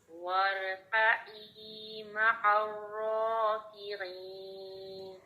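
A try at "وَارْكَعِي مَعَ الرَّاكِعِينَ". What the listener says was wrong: بس حمزہ کے مخرج سے عین کو مت اٹھایا کریں. عین کو اس کے مخرج سے اٹھائیں نا تو کبھی بھی آپ کا پہلے حمزہ نہ بنے اور بعد میں آپ کا عین بن رہا ہو.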